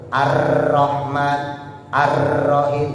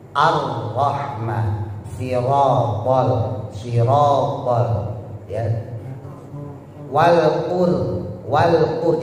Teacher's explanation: Sementara roh hijahiah dia punya sifat namanya takrir, yaitu getaran yang tidak lebih dari dua. Jadi bacanya agak cadel dikit tapi jangan dicadelin.